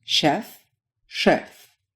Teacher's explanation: if you listen carefully you can hear that in Russian the pitch of the consonant drops a bit